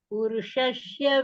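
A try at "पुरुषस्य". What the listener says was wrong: Shashya no. Purushasya. not shashya. Sya it is. Purushasya. Sya.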